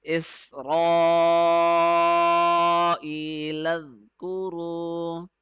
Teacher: In order to pronounce this letter correctly, we have to place the tip of the tongue at the edge of the upper front two teeth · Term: zal